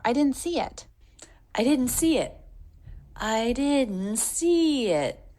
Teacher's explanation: Little swell on didn't see it. And then more stress on the word see. All smoothly connected.